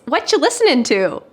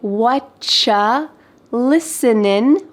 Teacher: But oftentimes you becomes cha with a question, so we can say whatcha listening, we're cutting off that final G, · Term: reduction